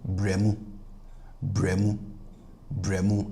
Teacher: So that u in the second word will cause the last vowel of the first word which is a here to be pronounced as the plus atr version which is e right. So you hear bremo bremo bremo.